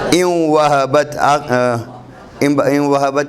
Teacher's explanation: اچھا، اس کے بعد مثال آ گئی ہمارے پاس حمزہ واو زیر، اصل میں یہ تھا ان، یہ نون ساکن تھا، واو آنے کی وجہ سے واو سے پہلے نون ساکن آ گیا تو یہ واو بن گیا تری کے ساتھ، یعنی ادائیگی میں غنہ کے ساتھ